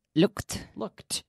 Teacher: Anytime we have a regular verb that ends in a K, in the past, the ending sounds like a T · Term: hard T